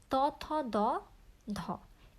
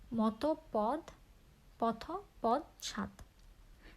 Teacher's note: সামনের অংশ উপরের পাটি দাঁতের নিচের অংশকে স্পর্শ করে দন্ত ধ্বনিগুলো উচ্চারিত হয়